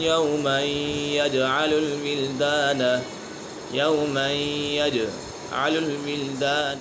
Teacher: الْوِلْدَانَ، یہاں پر ادغام یرملون کا قید لگ رہا ہے کیونکہ تنوین کے بعد یا حرف یرملون میں سے ہے تو یہاں ادغام یرملون ہوگا، یعنی غنہ کر کے پڑھیں گے۔